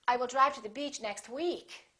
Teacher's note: And finally, if you really want to emphasize that you're saying week, you can put a little more extra stress on the word week.